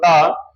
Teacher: दंत जीभ की नोक दांत को छुए कहां छुएगा दांत को यानी कि यह सब वर्ड बोलने से माने त थ जो है बोलते हैं इसका उच्चारण बोलो त तो जब तक जीभ दांत में नहीं सटेगा उच्चारण नहीं हो सकता है